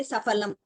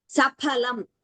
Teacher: In Hindi, it is fal. In Sanskritam, it is phalam. There is no fa only. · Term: Mahaprana